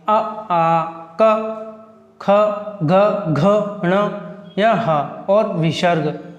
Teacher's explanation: उच्चारण स्थान जैसे कंठ, कंठ क्या, कंठ अपना कहाँ होता है, कंठ अपना यहाँ गर्दन पर होता है, इसलिए अपन वहाँ से आवाज़ निकालेंगे अ आ क ख घ घ ण या ह और विसर्ग, ये सभी वर्ण कंठ से बोले जाते हैं